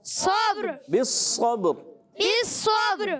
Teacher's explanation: یعنی با میں قلقلہ، صبر، پھر را کی ادائیگی، اور را میں جو ہے تکرار اصلی نہ ہو جائے۔